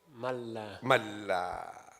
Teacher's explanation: Idgham without ghunna. You do idgham, but you don't do ghunna. · In reality, what you are doing, you change this noon into a lam, and you are merging lam with the lam. So how you say it?